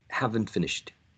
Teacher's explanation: The t disappears. Elision of the sound t.